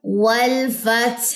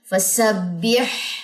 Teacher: ہا کو گلے کے وسط یعنی کہ گلے کے درمیان سے آپ نے نکالنا ہے